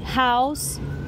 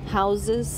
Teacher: que é com som de S. E no plural é com som de Z